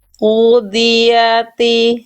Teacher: ini pangkal lidahnya naik ini yang membuat bunyi dot itu tebal dan huruf-huruf tebal itu tebal karena pangkal lidahnya ke atas bukan ke bawah, bukan ke bawah.